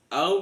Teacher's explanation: langsung masuk ke tasjid di ro maka disebut dengan bacaan idgham bila ghunah dimasukkan tapi tidak mendengung